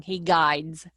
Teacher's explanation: um okay guide well when you say guide it's yeah it's when you put the s on it that d is not as strong he guides it almost sounds like a silent d